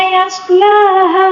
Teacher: مد منفصل بھی ہے، اس کو 3 الف کے برابر کھینچ کر پڑھنا ہوگا